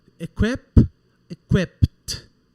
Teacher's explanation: nós vamos pronunciar o ED como se ele fosse um T.